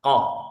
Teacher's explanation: Bunyinya keluar dari pangkal lidah dekat dengan kerongkongan, dekat dengan kerongkongan, yang kemudian dihimpitkan ke langit-langit ini ya, dihimpitkan ke langit-langit mulut bagian belakang. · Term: huruf Kof